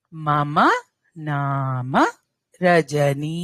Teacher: నామ నా కి దీర్ఘం మ కి దీర్ఘం లేదు